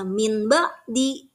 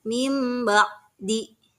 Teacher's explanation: Nah, jadi jika kalian bertemu seketika membaca Al-Quran, bertemu dengan nun sukun, bertemu dengan huruf ba, itu dibacanya iqlab. Jadi nun sukunnya seolah-olah tidak ada, ditukar dengan mim.